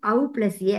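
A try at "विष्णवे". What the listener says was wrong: Please pronounce it as Ava plus A. Ava instead of Au. O. As long as it is O, we will get Av as replacement.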